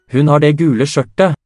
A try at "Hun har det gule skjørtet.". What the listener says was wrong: Hun har det gule skjørtet. Skjørtet, it should be, not T.